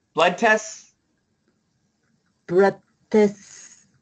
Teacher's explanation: Now, the nice thing is the S is a strong sound. The T is weak. We can actually just say blood tests.